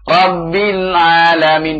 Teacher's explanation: Rabbil, perhatikan. Lamnya, lidahnya tahan dulu baru kemudian ain keluar. Ya. Rabbil alamin, di sini tidak ada sakta, tidak ada qalqalah ya.